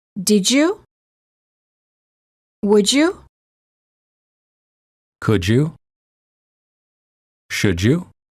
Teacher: D+ Y is usually pronounced as J as in joke